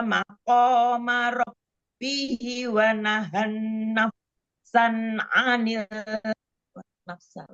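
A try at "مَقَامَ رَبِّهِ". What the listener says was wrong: Hinya silahnya dipanjangkan 2 harokat.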